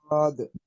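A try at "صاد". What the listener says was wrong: আরো টান দেন সদ। সদ আরো টান দেন সদ।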